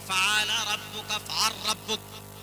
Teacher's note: لام اور را مل جائے تو وہاں پر ادغام کر دیتے ہیں